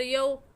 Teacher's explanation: लीन को बग़ैर खींचे, बग़ैर झटका दिए हुए नरमी से पढ़ते हैं। तो हम यऊ को खींच कर नहीं पढ़ेंगे बल्कि नरमी से पढ़ेंगे। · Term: वाव लीन